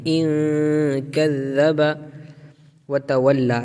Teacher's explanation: کے بعد حروف اخفا کے 15 حروف میں سے کاف ہے، نون کی آواز کو ناک میں چھپائیں گے